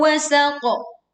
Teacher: Lalu pantulkan qaf dengan suara yang kuat dan tebal.